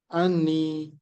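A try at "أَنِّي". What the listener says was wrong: anni. Ya, di sini ada tasdidnya jadinya. Anni. Ya, anni. Ini biasanya kalau anni sama anna dia ada tasdidnya, tambahan tasdid.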